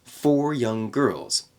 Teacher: connect that n Sound at the end of young with G in girls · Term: ng sound